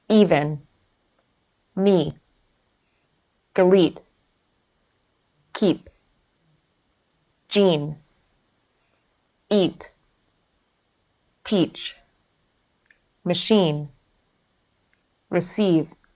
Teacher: produced by positioning the tongue forward and high in the mouth the jaw is in an almost closed position the corners of the mouth are pulled to the sides making · to the sides making the lips retracted like a wide smile the E is tense and long in duration tension should be felt in the jaw lips and tongue just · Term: vowel sound e